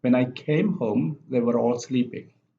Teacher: at the beginning and it only has one syllable came and the second clause the main clause also only has one stress syllable sleeping and it goes down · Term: sustained intonation